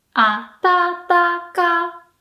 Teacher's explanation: You start low and then go up, but you end low. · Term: nakadaka